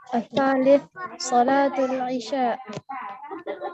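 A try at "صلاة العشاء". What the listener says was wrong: Salatul Isya. Mumtaz, barakallahu fikum.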